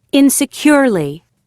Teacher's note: stress on second syllable apparently eventually immediately incredibly successfully surprisingly three stress on third syllable